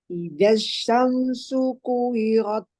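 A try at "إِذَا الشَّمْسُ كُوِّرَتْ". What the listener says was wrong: Nah, wawunya, Dok. Tasdid. Ingat, masuk ke sukun wawu pertama. Ku gitu.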